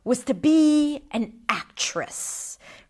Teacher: Which shows me that first of all there is a period here and full stop. But also when you go to the bottom of your pitch at the end and you're not rising again with your pitch, it gives you a sense of certainty and conviction